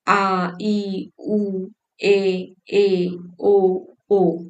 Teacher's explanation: वे ह्रस्व स्वरों से दुगना समय लगाते हैं उच्चारण में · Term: दीर्घ स्वर